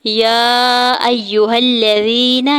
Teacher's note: یا کے اوپر کھڑی زبر اور مد منفصل ہے، 4 سے 5 حرکت کھینچ کے ادا کریں گے۔ حمزہ کی زبر کو یا مشدد کے ساتھ ملاتے ہوئے پڑھیں گے۔